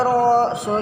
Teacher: terdapat hukum bacaan alif lam asy-syamsiyah karena alif lamnya tidak dibaca atau ro-nya berharokat tasydid